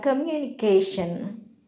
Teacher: When you listen to the word communication, the syllable CA is heard stronger, louder and longer. Communication have 5 syllables: come, you, ni, ke, shun. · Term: primary stress